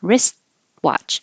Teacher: you don't say the T you just hold it in the T position